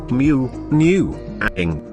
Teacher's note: the soft pallet is lowered such that air flow into the oral cavity is obstructed · creating a passage for air into the nostrils and out into the atmosphere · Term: nasals